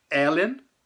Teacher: a sílaba tônica tá na primeira sílaba da palavra